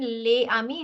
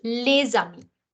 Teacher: in this manner in such a case what happens is that you transfer the consonant sound onto the vowel sound and hence it does not remain Le Ami instead it becomes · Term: liaison